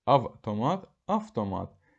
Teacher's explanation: Söz ortasında V-T samit qoşalı gələrsə, birinci samit karşılığı kimi tələffüz ediləcək.